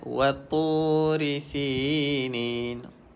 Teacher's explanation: Nak bunyikan huruf ta, pastikan lidah kita sentuh di belakang gigi kacip atas.